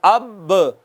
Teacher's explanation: دونوں ہونٹوں کا جو اندر والا تر حصہ ہے وہ ملا ہے، با ادا ہو گئی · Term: با کا مخرج